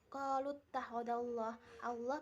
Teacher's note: lafaz jalalah dibaca tafhim sebab huruf sebelumnya berharokat fathah